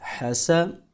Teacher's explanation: حا زبر حا، سین زبر سا، حسا۔ سین حروف صفیریہ میں سے ہے، تو ہم اس کو سیٹی کی آواز سے ادا کریں گے